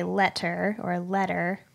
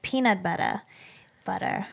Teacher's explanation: we pronounce the letter T more like a D particularly when it is two T's such as in letter so we say letter or a letter well we kind of